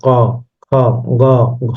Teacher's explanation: কোমল তালু ও জীবমূলের স্পর্শে কণ্ঠধ্বনি উচ্চারিত হয়